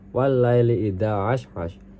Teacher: al-laili dibaca idgham syamsiyah karena lam diidghamkan ke huruf lam karena huruf syamsiyah.